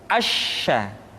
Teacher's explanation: Sya dikeluarkan dengan cara mengangkat tengah lidah kita ke langit-langit.